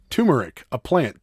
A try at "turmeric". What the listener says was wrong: Not turmeric. It's turmeric. Tur. There's an R. It's not turmeric. If it was turmeric, it would be It's Tur. Tur.